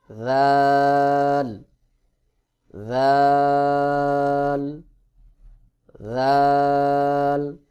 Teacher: সঙ্গে লাগাইয়া অর্থাৎ সা এবং জাল একই জায়গা থেকে উচ্চারণ হবে জিহ্বার আগা সামনের উপরের বড় দুই দাঁতের আগার সঙ্গে লাগাতে হবে স্বাভাবিকভাবে পাতলা করে উচ্চারণ করতে হবে